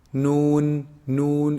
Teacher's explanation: noon is actually pronounced from the tip of the tongue when they hit, you see the upper incisors behind them a little bit